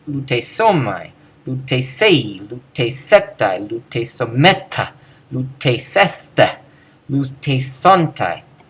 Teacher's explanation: All of these, we see that the ending is emphasized.